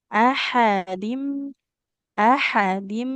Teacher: ha di tengah tenggorokan ya